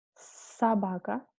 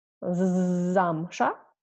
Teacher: Also, yeah, s and z, s, z. The difference is very easy because s we have without any voice, yeah, and z we say it with voice.